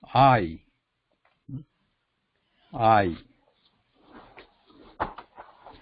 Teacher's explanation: When we are saying I, we are starting with ah sound first. Ah, like father.